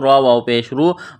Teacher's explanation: را کے اوپر پیش ہے تو را کو موٹا کرنا ہے۔ واو ساکن ہے، واو ساکن سے پہلے پیش ہے، حروف مدہ واو ہے، ایک الف کے برابر اس کو کھینچنا ہے۔